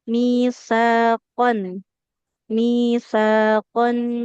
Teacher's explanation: ujung lidahnya ditempelkan ke ujung gigi seri atas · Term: huruf sa